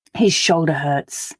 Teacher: sounds are made in exactly the same way in the mouth there's no kind of break at all between the two sounds they do simply run from one to the other and it is just a case of switching the voice off